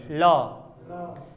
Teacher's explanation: पार्श्व मतलब अर्थात ल बोलने पर हवा जीभ के किनारे से निकलती है। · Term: पार्श्विक व्यंजन